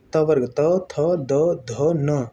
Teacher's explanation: ल और सा, ये दंत्य वर्ण हो गए, दंत से उच्चरित वर्ण हो गए